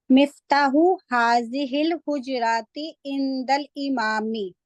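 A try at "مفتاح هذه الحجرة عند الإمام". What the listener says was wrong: Very good.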